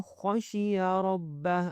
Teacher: یہاں پہ خو کو موٹا کرنا ہے اور را کو بھی موٹا کرنا ہے